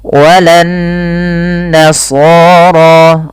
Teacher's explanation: Cara membacanya adalah ditahan suara nunnya sepanjang 2 harakat. Jadi tidak langsung dibaca walan nasara, tapi ada tahanan dulu sepanjang 2 harakat. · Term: gunnah